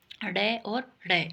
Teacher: से पढ़ना ये उत्क्षिप्त में बताए थे देखो जीभ ऊपर उठकर जीभ ऊपर उठकर झटके के साथ नीचे आती है · देखो जीभ ऊपर उठकर झटके के साथ नीचे आती है, जैसे ड और ड, इसलिए ये उत्क्षिप्त व्यंजन है।